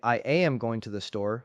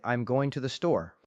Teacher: A learner might say I am going to the store, stressing every word equally, but a native speaker would say I'm going to the store. The words am, to, and the are reduced. They are pronounced quickly and quietly.